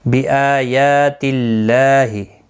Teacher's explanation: اللہ کا لام زیر کی وجہ سے باریک پڑھا جائے گا · حمزہ اور یا کے دونوں کے اوپر کھڑی زبر ہے، ایک ایک الف کی مقدار کے برابر کھینچ کر پڑھیں گے